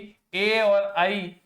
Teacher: ए और आई इनका जो उच्चारण होता है वो कंठ व तालु से होता है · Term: कंठ तालु